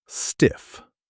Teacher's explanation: Keep the I short like in sit.